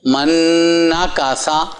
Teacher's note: اب نون نون میں مل گیا